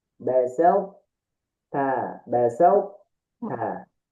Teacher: Maksudnya, ketika melebur ini kurang, berarti huruf to-nya dibaca. Awalnya kita ngucapin huruf to, kemudian ujungnya kita ngucapin huruf ta. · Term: idgham nakis